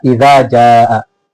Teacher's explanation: जाल को जबान की नोक दांतों के किनारे को लगाकर पढ़ना है